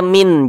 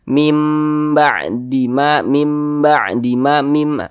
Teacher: Mimnya itu kita tahan, kita panjangkan sejenak karena dia didengungkan. Mim ba'dima, ma dibaca panjang. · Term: iqlab